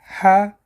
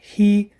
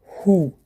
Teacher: Буква Х образуется в нижней части горла. С фатхой читается Х, с касрой читается Хи, с даммой читается Ху.